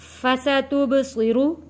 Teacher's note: سین کی آواز سیٹی جیسی آواز آئے گی، با حروف قلقلہ ہے، صاد موٹا پڑھے جانے والا لیکن سیٹی سے پڑھے جانے والا لفظ ہے۔